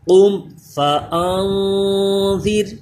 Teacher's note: نون ساکن میں غنہ کر رہے ہیں، رال پہ خیال رکھیے سیٹی پیدا نہ ہو · نون ساکن پہ اخفا ہو رہا ہے، غنہ کریں گے۔ یہ را باریک پڑا جائے گا کیونکہ اس سے پہلے زیر اسی کلمے میں ہے